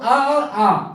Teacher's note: अ और आ छोटा और बड़ा जो है वो कंठ से बोला जाता है इसको कंठ स्वर बोलते हैं